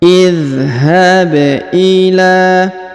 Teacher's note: idzhab Ila ya idhab huruf ba dipantulkan ya idhab Ila kemudian huruf la dipanjangkan dua harakat karena di atasnya terdapat tanda Alif kecil